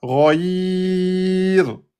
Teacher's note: le ra, quand il porte sukun et qu'il est précédé par la lettre ya, il est aminci. D'accord? Donc le ra ici sera aminci à cause du ya.